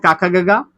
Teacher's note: क ख ग ग कंड से बोलेंगे